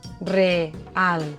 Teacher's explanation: Dues vocals fortes, síl·labes diferents. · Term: iats